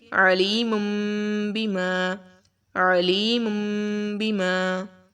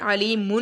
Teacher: نون کی آواز کو ہم لوگ میم کے ساتھ بدل دیں گے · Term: اقلاب